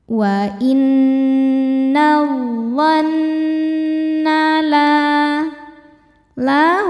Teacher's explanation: hukumnya mad thobi'i zohiri karena ada alif sebelumnya fathah. Cara bacanya panjang dua harakat.